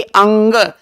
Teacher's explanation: जीभ आपकी लगेगी तालु में, यानी ये तालु से तालव्य है